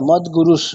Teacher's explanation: বিসর্গটাকে আমরা হকারের মতো উচ্চারণ করব না, কি করব, তালব্য স উচ্চারণ করব।